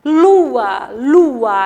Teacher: é o encontro de duas vogais mas quando são pronunciadas ficam em sílabas diferentes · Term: hiato